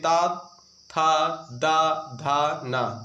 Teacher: इसको बोल कर देखिए, ता वाली लाइन बोलिए, 5 अक्षर बोलिए, ता, था, दा, धा, ना। ये जो जीभ है दोस्तों दांतों से टकरा रही, तभी इसको दंत बोलते हैं, याद रखिएगा। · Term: दंत ध्वनि